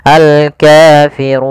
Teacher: pada lafal ru di sini ra tebal, yaitu ra tafkhim. Ra-nya dibaca dengan tebal.